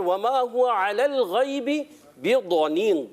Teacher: ضاد یہ ضاد جو ہوتا ہے اس کو پر رکھنا ہے. پر بھی ہوتا ہے اور ایکسٹرا پر ہوتا ہے. جی ہاں اس کو ایکسٹرا موٹا رکھنا ہے.